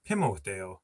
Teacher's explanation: when we get into 3 syllables, all of a sudden, instead of stressing the last one, we go back to the third last one.